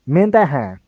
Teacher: So the me, instead of being kind of like a falling tone, it turns into this kind of rising tone. Me, and then that being um, like higher than the me, that han, and then it goes down.